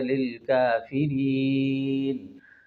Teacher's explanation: اعدت للکافرین، یہاں پر مد عارض وقفی ہے کہ حالت وقف میں حروف مدہ کے بعد نون پر سکون عارض ہوا